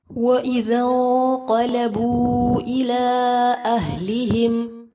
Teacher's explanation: نون ساکن کے بعد قاف پر اخفا کیا جائے گا، پھر آگے دونوں جگہ مد منفصل ہے، 3 سے 4 حرکات جتنا لمبا کریں گے